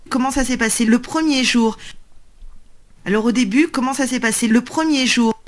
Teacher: you do hear a little bit of a scraping sound on that r in promise it's coming from the back of the mat of the mouth